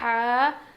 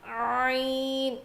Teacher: جب ہم یہ ہا پڑھیں گے تو ہوا باہر نکلے گی سانس, اور عین پڑھیں گے تو نہیں نکلے گی. ہا, عین, دونوں کا مخرج سیم ہے.